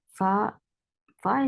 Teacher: Fa Fa is the letter whenever it is with fatha, dhamma, kasra, in any position. It will take the sifa of hums, and hums is a flow of breath.